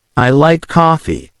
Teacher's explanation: coffee on the other hand if you say I like coffee with emphasis on the word coffee it shows that coffee is your preferred drink